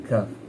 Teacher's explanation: Makhraj syam ni al-lisani, lidah, kaf. Mengangkat pangkal lidah dan menekannya ke lelangit lembut. Pangkal lidah terkeluar sedikit daripada makhraj qaf. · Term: huruf kaf